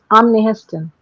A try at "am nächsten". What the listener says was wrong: Am nächsten. ये सी लगेगा इसमें.